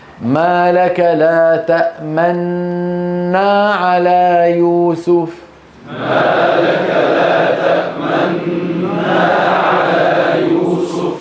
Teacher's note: الإشمام سننطق نون مشددة ونزم الشفتين إلى الأمام طالما النون ممطوطة